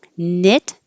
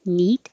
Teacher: knit is a little bit lower knit then neat which is higher